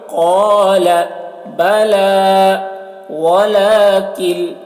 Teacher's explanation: قاف کو موٹا کر کے پڑھیں گے ، قَالَ بَلَى وَلَكِنْ، وَلَكِنْ یہ کاف ہے، کاف کو باریک،